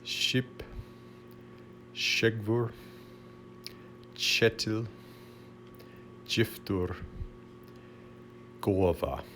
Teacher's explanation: In Faroese, you see these all palatalized except the last one.